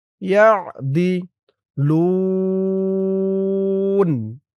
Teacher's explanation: ওয়াকফ করার কারণে এই এক আলিফ টান ৩ আলিফ হয়ে গেছে। লুন মধ্যে আরজি।